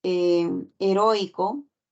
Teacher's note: la palabra Heroico la vocal o es la que lleva la mayor fuerza de voz